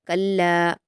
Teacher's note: कल्ला में लाम पर तशदीद है तो सख्ती के साथ पढ़ा जाएगा, दो हरकत खींचकर।